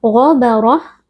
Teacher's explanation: gha huruf tebal kita baca dengan mengangkat pangkal lidah